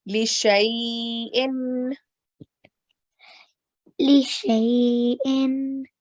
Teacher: if you find fatah before ya sakin, so that ya sakin is ya leen, and you're going to soften it for 2 seconds